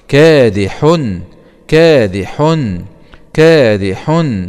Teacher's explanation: فتحة كا ألف سكون مد طبيعي كا دال كسرة دي كادي، حاء ضمتين مع الإظهار الحلقي